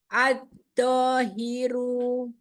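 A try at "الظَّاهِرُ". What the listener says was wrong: Zo, keluarkan ujung lidah, gesekkan zo. Bukan do, jangan ditempelkan, gesek. Zo.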